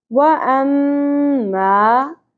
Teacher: و زبر کو زیادہ نہیں کھینچنا. اما میم مشدد غنہ ہوگا. وَأَمَّا من نون ساکن پہ اظہار ہوگا کیونکہ آگے حروف حلقے میں سے حمزہ آ گیا.